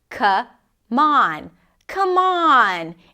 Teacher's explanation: The M of come becomes the beginning of the word on.